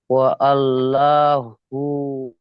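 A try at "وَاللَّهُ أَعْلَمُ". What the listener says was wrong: ওয়া আল্লাহ নয়, ওয়াল্লাহু। যাবার লা হবে না, ল হবে, ল। ল, ল, ল। আল্লাহ শব্দের আগে।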